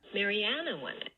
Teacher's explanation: the stress syllable here is this third syllable in the name Maryana or the penultimate syllable and we get a more dramatic rise here marianna one and · with a low plus H star, you should get a more dramatic rise in F0 to get to the peak for the H star part of it. For regular H star, you do get a peak, but it's not as dramatically, exponential, you might say, rising into the top of the F0 contour.